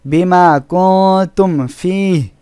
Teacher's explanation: এখানে কুং নুন সাকিন এর পরে তা ইকফা অক্ষর, এজন্য এখানে গুন্না করে পড়তে হয়েছে।